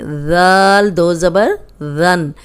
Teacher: اس میں سیٹی کی آواز نہیں آنی چاہیے. اوپر سامنے کے جو دو دانت ہیں ان پہ زبان رکھیں کنارے پہ تو اس کو ادا کریں